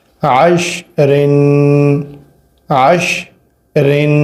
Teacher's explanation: یہاں پر غنہ ہوگا کیونکہ را کے نیچے دو زیریں ہیں، تنوین ہے